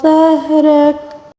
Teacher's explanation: ظاہرک، ظا کو بھی پر پڑھیں گے اور را کو بھی پر پڑھیں گے کیونکہ را کے اوپر زبر ہے، ٹھیک ہے۔ اور وقف کے دوران کاف کے اوپر جو زبر ہے اس کو ساکن کے ساتھ پڑھیں گے